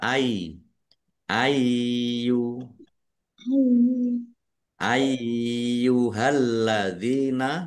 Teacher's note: lamnya ada tasdidnya dibaca dobel ditekan dan ditahan biar tampak dobel. Dal kasrh ya sukun mad thobi'i panjang dua harakat.